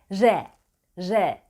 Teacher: damakta başlar dişetlerinin biraz gerisine doğru konumlandırılır dilin ucu ortalama işaret parmağının Annie kadar geride diyebiliriz tabi ağız yapısına göre